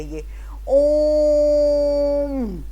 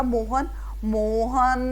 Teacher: लेकिन जब हम प्लुत स्वर का यूज या प्रयोग कर रहे हैं और हम इसको बोलें तो लंबा खींचा जाता है